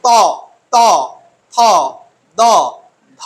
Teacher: উচ্চারণ স্থান হলো দন্ত বা দাঁত তাই এই ধ্বনিগুলিকে বলা হয় দন্ত ধ্বনি